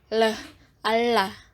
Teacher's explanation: fonem L dengan cara artikulasinya lateral aproksiman dan tempat artikulasinya di alveolar atau belakang gigi